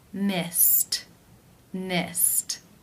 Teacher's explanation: The final infinitive sound is S, the S sound. That is unvoiced, so it is case 1, where the ED is pronounced as the T sound.